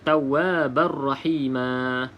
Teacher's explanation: Selepasnya huruf ra, maka tidak boleh dengung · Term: masuk dalam huruf ra